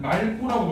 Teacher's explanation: 리을 기억 뒤에 기억이 나오면 리을로 발음한다. 그럴 때는 말고라고 발음을 해줘야 돼.